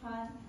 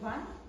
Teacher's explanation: here the F is voiceless fricatives, and in the van is V is voiced fricatives